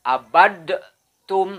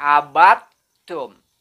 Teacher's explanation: Jadi bukan dal yang lebih terdengar suaranya, tapi huruf ta-nya. · Jadi ketika membaca menghadapi ta, qalqalahnya harus hilang, wajib hilang, ya. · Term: idgham